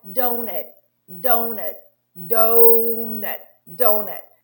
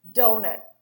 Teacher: And when they are reduced, the vowels are reduced to almost nothing, sometimes to So I say, for example, a word like donut, donut, donut, donut. Do will be strong, nut will be really unstressed.